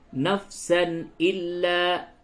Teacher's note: تنوین کے بعد حمزہ آیا تو اس جگہ پہ اظہار ہوگا